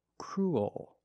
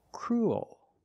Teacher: your tongue is not straight it goes a little high in the back and the bottom of the tongue expands it gets bigger to make the dark l